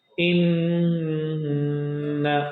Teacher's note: Noon shaddiya, noon mushaddad, must ghunna, at least 2 vowel counts. In, but we cannot stretch the voice of na, no. · we cannot stretch the voice of noon. Just do ghunna and stop it.